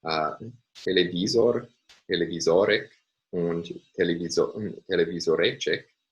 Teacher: So based on the first three examples here, televisor, televisorek, and televisorecek, there we can see consistently that the primary stress is occurring on the second to last syllable. So these are words with 4, 5, and 6 syllables respectively, and in each case, the primary stress falls on the second to last syllable.